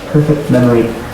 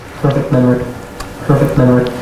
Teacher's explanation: You clearly hear the sound T in perfect memory, and when you speak fast, you say it perfect memory, where the sound T is not produced, or it appears to have been deleted.